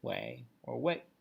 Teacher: it doesn't matter if it's second tone or fourth tone both are totally acceptable